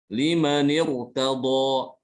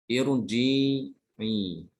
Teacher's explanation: Ini kan menyelisih kaidah yang nomor 2 ini. Rohnya sukun Tapi ini sebelumnya kasroh yang bukan asli, sehingga rohnya ini dibaca tebal.